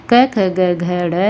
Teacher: कंठ से जो बोला जाता है कै वर्ग